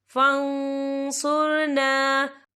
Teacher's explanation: یا دیکھیے فن، یہاں نون ساکن ہے، نون ساکن کے بعد جو ہے صاد آ رہا ہے، اور صاد جو ہے اکفا کا ورڈ ہے، تو ہم کیا اکفا کریں گے، نون ساکن کی آواز کو ناک میں چھپائیں گے